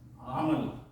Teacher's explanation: ابھی دونوں میں ہم جو سب کانٹیننٹ کے لوگ ہیں، انڈین، پاکستانی، بنگالی بھائی، یہ عین اور حمزہ ان دونوں کو ہم ایک ہی جگہ سے پروناؤنس کرتے ہیں، وچ از ٹوٹلی رانگ. عین جو ہے یہ مڈل آف دا تھروٹ، یہاں سے نکلتا ہے